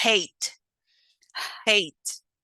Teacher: we have voiceless glottal fricative, which is the phoneme h, such as in hate, hate.